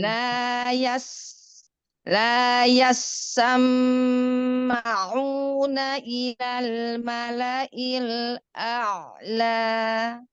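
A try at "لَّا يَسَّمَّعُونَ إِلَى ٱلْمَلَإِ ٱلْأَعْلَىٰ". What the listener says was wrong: Memang hamzahnya dan ainnya nggak ketukar. Tapi sinnya memang masalah ini.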